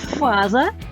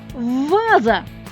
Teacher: глухий звук ф міняємо його на дзвінкий звук в